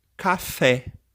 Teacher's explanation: Observem que a palavra café, o acento forte, né, o som forte, fica na sílaba fé. E aí nós marcamos com o acento agudo esse som forte. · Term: sílaba tônica